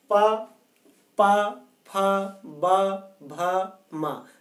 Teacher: हमारे ओंठ दोनों टच कर रहे हैं फिर खुलते हैं, तो ये ओष्ठ वर्ण कहलाते हैं।